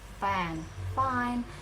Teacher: you don't use your vocal cord. It's more of soft airy sounds like the word fan.